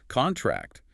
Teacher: Contract with the stress on the first syllable, which is the noun, the document.